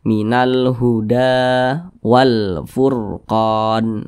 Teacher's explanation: dibaca panjang ini huruf Dal di atasnya ada Alif kecil maka huruf Dal dibaca panjang Mad thi'i panjangnya dua harakat atau kira-kira dua ketukan